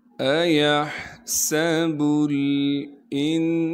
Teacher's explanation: ایحسب الانسان، حمزہ کو بغیر کھینچے بغیر جھٹکے کے پڑھیں گے، یا کو ہا سے ملائیں گے اس لیے کہ ہا ساکن ہے۔ ہا کو صاف کر کے گلے سے نکالنا ہے، گلے کا وہ حصہ جو منہ کی جانب ہے۔ سین میں سیٹی ادا کریں گے۔